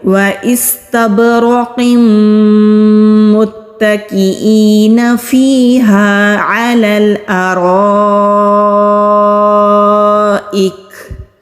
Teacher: یہ جو اینڈ میں ہلکی سی آواز آئی ہے کاف کو ادا کرنے کے ساتھ، اس کو کہتے ہیں ہمس